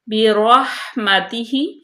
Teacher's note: با باریک، را پر، ہا کا مخرج واضح کریں